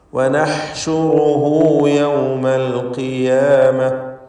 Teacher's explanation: ളമീറിനെ മദ്ദുസ്സുലത്ത് സുഗ്റ നൽകി ദീർഘിപ്പിക്കുക.